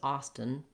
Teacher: we go right from that t to the n with a very reduced little vowel in there